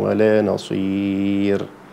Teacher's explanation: لا، المفروض أني أنطق الراء، يعني أقف في آخر الراء، آخر الحرف مش في أول الحرف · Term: الراء الموقوف عليها